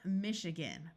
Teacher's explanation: the A has a muffled sound that can sound like either a short U or a short I